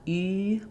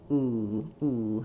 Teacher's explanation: I do have that lip rounding, but my tongue is further back